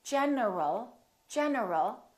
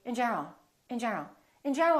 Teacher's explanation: my tongue is moving for the n and it's moving for the L so when I say in general my tongue moved three times